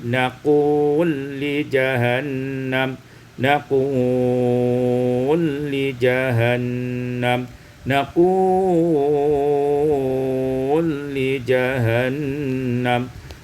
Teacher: diidghamkan lam pada lam maka menjadi naqul li jahannam, naqul li jahannam, naqul li jahannam. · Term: idghamul lam fil lam